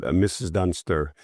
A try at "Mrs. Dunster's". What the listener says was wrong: No, it's Dunsters with an S. Apostrophe S.